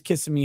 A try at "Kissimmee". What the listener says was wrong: You said kiss me. It's Kissimmee. Kissimmee.